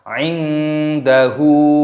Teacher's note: nun sukun bertemu dengan huruf dal, ini dibaca samar. Ikhfa itu artinya samar.